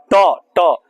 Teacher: ट वर्ग का उच्चारण स्थान क्या होता है मुर्धा होता है ट ट जो जीभ के ऊपर वाला भाग है वो मुर्धा